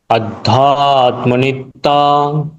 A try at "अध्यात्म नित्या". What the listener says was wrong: अध्या य का उच्चारण होना चाहिए। अध्यात्म नित्या, नहीं जस्ट ये बंगाली उच्चारण, ध्या य का उच्चारण होना चाहिए। अध्यात्म नहीं, अध्यात्म, ध्या ध्या ध्या, य का उच्चारण होना चाहिए। ध आधा और उसको य, ध्या।